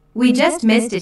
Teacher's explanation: notice the emphasis on just to show the very recent past